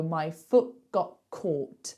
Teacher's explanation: So I put the T in front of in. But for foot and got, I take away the T.